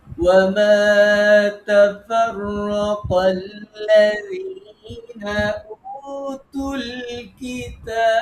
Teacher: আমরা যখন কিতাবে অক্ষ করব বাতে সাকিন দেব তখন বাতে কলকলা হবে আর কিতাবের তাতে তিন আলিফ মাদ হবে